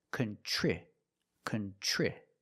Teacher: Then for the second syllable, we have tr and tr makes the chch- sound like chicken plus the r together